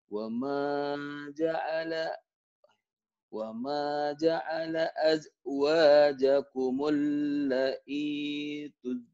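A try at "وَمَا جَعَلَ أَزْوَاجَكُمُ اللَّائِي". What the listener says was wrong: la'nya itu panjang la'i gitu, la'nya kan panjang. Dan wajib mutasil. I-nya panjang juga. I-nya kan matobi. La, la-nya jelas. Alis ini panjang. La, mad wajib mutasil. I matobi.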